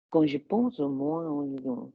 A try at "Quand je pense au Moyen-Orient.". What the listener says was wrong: That was fucking good.